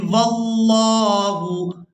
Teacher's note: لفظ اللہ کی لام کو پورا ادا کرنا ہے کیونکہ اس سے پہلے والے حرف پر زبر ہے